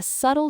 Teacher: Key number one, the pronunciation is subtle. Two syllables with the stress on the first. It rhymes with shuttle.